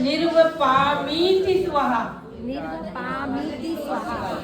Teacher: इसको बोलते हैं निर्वपामिति। देखो मी में बड़ी मात्रा है, ती में छोटी मात्रा है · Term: दीर्घ और ह्रस्व